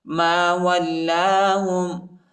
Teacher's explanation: میم کو لام کے ساتھ ملائیں گے، لام پر شد آیا ہے، لام کو شدت کے ساتھ سختی کے ساتھ پڑھیں گے، الف نہیں پڑھا جاتا، الف پر حرکت نہیں۔